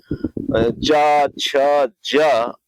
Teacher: जब हम च ज और को बोलते हैं तो हमारी जो जीभ होती है वो हमारा जो जबड़ा होता है ऊपर का उसके छत को ये टच करती है। तो यहां पर उसे हम तालु भी कहते हैं। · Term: तालव्य